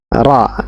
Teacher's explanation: huruf ra di sini makhrajnya keluar dari punggung ujung lidah punggung ujung lidah bertemu dengan pangkal dua gigi seri atas pangkal dua gigi seri atas bagian dalam ro nah perhatikan di